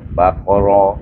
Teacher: Ba di atas ba, kha di atas qa, baqa, ra di atas ra, baca dengan tebal ra,